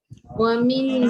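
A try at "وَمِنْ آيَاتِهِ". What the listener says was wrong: Okay, jangan ming. Saya ada dengar bunyi ng. Tak ng. Min. Jelaskan. M-I-N. Wa min ayatihi. Boleh min jangan ming. Okey, walaupun dia tak panjang wa ming, dia tetap bunyi ng. Kita tak nak jelas bunyi nun.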